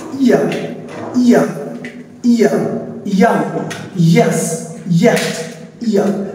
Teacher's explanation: আমাদের জিহ্বার যে middle part রয়েছে মিডল পার্টকে আমাদের ঠিক উপরে তালু বরাবর টাচ করবে এটাকে বলা হচ্ছে ফ্যালেট হচ্ছে আমাদের শক্ত তালুতে মানে বরাবর গিয়ে